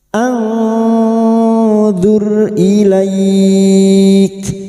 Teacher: Nun sukun dibaca samar dan mendengung selama tiga harakat.